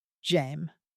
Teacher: French won't tolerate two vowels colliding like that. The first one disappears. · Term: Elision